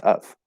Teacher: Okay, it's just of. The only reduction that might happen is we drop the V sound, but we don't reduce the vowel.